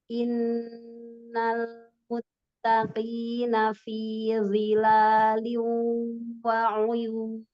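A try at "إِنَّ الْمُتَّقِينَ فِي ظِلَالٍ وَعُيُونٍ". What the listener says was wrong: Huruf wo jangan pakai bibir. Bukan wi, tidak. Wi, zilalin wa uyun. Tapi tebalkan. Zi, zilalin. Jadi pangkal lidah yang naik. Bibirnya nggak ikut bantu. Zilalin wa uyun.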